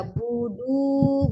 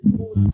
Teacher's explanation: Dalnya tebal, jangan ya. Tipis saja.